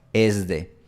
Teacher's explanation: La otra mitad, por supuesto, aspira, es de. Pero una mitad de los hablantes de español sonoriza esa s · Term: sonorización de s